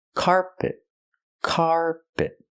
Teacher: floor I cannot say carpet carpet I cannot stress both syllables I stress the first syllable so it's carpet carpet the second syllable is not stressed it's closed and relaxed p p not carpet but carpet carpet example he's installing carpet